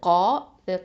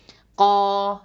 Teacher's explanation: அடுத்ததான் மீம் ஃபத்ஹா ம, காஃப் ஃபத்ஹா, அலிஃப் மத் இருக்குது கா. காஃப் வந்து ஹெவி, வாயை நல்லா ஓப்பன் பண்ணி உச்சரிக்கணும். அதே மாதிரி அலிஃப் பக்கத்தில் வந்திருக்குன்னா அந்த அலிஃபும் ஹெவியாக தான் உச்சரிக்கணும்.